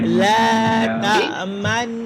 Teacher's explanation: ketika man itu bibir ke depan. Man dengung dengan muncung.